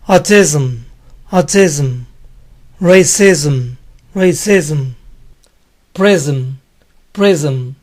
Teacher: En palabras que terminan en ISM, la S siempre suena Z.